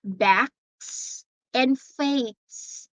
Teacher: We don't pronounce a letter S there as Z, but it's S.